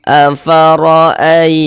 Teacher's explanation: Kita tebalkan huruf rnya sehingganya pangkal lidah kita naik terangkat ke atas ketika kita mengucapkannya. Afaroaitum di sini ada huruf ya sukun. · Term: dibaca takhim